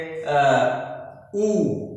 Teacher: जब उ करेंगे तो हमारे ओठ जो है मिलते हुए एक दूसरे से दिखाई देंगे